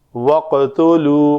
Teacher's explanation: قاف کو قلقلہ کریں گے اور قلقلہ پر ہوگا۔